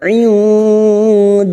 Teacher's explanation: nun sukun bertemu dal ikfa hakiki, kita samarkan bunyi nun sukun dan mendengung selama 3 harakat · lam jalalah yang didahului fathah kita baca tafkim